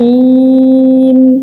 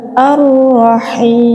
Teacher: Jadi maka dia dibaca mad arid lis sukun. Mad arid lis sukun ini panjangnya boleh satu, boleh dua, atau boleh tiga alif.